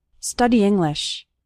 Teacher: Those two words kind of run together. The E from study and the I from English kind of combine.